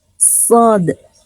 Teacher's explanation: Ini huruf shad namanya shad, ada pantulannya di akhirnya shad karena ada unsur dal